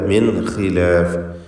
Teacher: മിൻ എന്നതിൽ സാക്കിനത്തായ നൂൻ ശേഷം ഖാ ഇസ്തിഅലാഇന്റെ ഹർഫാണ്, ഹൽക്കിൻ്റെ അക്ഷരമാണ് എന്നതാണ് ഇവിടെ ശ്രദ്ധിക്കേണ്ടത്. അഥവാ ഇൽഹാർ ഹൽക്കി നൽകി നൂനിനെ വെളിവാക്കണം, മണിക്കാതെ. മിൻ ഖിലാഫ് ഇസ്തിഅലാഇന്റെ ഹർഫാണ്, കസ്റുണ്ട് എന്നതുകൊണ്ട് കുറഞ്ഞ തഫ്ഖീം കൊടുത്ത് അതിനെ ഉച്ചരിക്കണം.